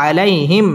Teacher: আলাইহিম মিম সাকিন ইজহারে খাস গুন্না ছাড়া পড়তে হবে